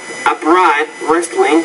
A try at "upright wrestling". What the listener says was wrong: No, it's upright wrestling there, not upright. So the stress here is on the first, not the second syllable. So upright wrestling...